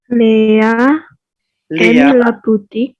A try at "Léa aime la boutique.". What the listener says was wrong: Très bien. Léa, oui. Léa aime la boutique. Bien.